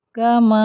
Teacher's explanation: میم کے اوپر زبر اور آگے الف مدہ ہے، 2 کاؤنٹ اس کو اسٹریچ کریں گے